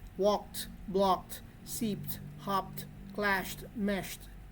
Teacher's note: when the last sound of the word is voiceless the Ed also becomes voiceless